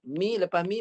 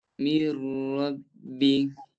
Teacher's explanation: Mi lepas mi masuk tanpa dengung.